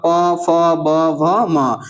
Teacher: प वर्ग में अब प, फ, ब, व भ, म ये सभी जो है वो किससे बोले जाएंगे? ओष्ठ से।